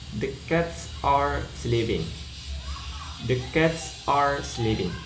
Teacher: the final S in cat sounds like it joins the following word